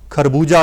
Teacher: ਇਹਨਾਂ ਸ਼ਬਦਾਂ ਦੇ ਵਿੱਚ ਉਚਾਰਨ ਦੇ ਵਿੱਚ ਖੱਖਾ ਜਿਹੜਾ ਹੈ ਉਹਦੀ ਆਵਾਜ਼ ਨਰਮ ਹੋ ਜਾਂਦੀ ਹੈ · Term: ਖੱਖੇ ਪੈਰ ਬਿੰਦੀ